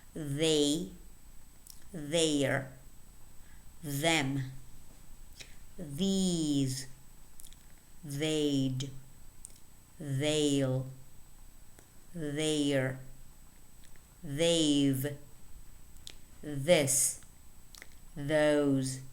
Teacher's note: now let's read the words that contain the voiced interdental fricative